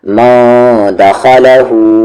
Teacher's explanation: ध्यान से इसे एक साथ पढ़ें, दखलहू, सिर्फ हु को खींचे और बाकी इन तीनों को जल्दी जितना हो सके